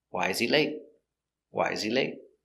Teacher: information question the intonation goes down at the end